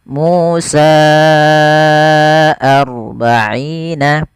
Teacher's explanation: Maka konsep daripada mad jaiz itu apabila ada mad tabi'i bertemu dengan hamzah dan posisi hamzah pada kata yang lainnya, bukan dalam satu kata, dan di situ kita baca dengan mad jaiz munfasil. Panjangnya adalah 4 harokat atau 5 harokat